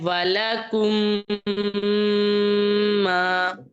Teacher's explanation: میم ساکن کو میم متحرک کے ساتھ اس طرح ملا کر پڑھنا ہے کہ دونوں ایک ساتھ جو ہے ادغام ہے نا مدغم ہو جائے، یعنی پہلا میم ساکن دوسرا متحرک، تو جب وہ ملیں گے مدغم ہوں گے ایک دوسرے میں، تو پھر ایسی صورت میں کیا ہوگا، مشدد آ جائے گی، تشدید اس کے اوپر آ جائے گی. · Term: ادغام شفوی